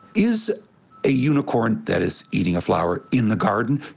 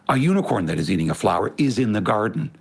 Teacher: We drop our voice to tuck in that little phrase prosodically. Our voices tuck that in.